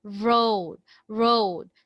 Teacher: the tip of your tongue is trying to curl to the Pate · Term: liquid